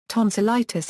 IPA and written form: ˌtɒnsəˈlaɪtɪs (Tonsillitis)